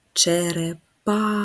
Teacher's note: позначаємо рисочкою приголосний твердий і останній звук а голосний позначаємо кружечком наголос черепаха на третій склад